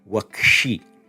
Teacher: the dental sibilant s in your ending is going to jump into becoming a retroflex, and we get the form wakshi.